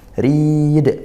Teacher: ro tarqiq rnya kasrah dibaca tipis